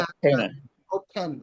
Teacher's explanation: দুই ঠোঁট বন্ধ করে বাতাস বের হবে